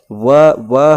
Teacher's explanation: दांत और होठ के प्रयोग से व का उच्चारण हो रहा है